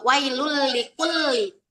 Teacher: Dibacanya itu nun matinya itu dimasukkan ke bunyi huruf ro dan lam itu tanpa dengung. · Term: idgham bila gunnah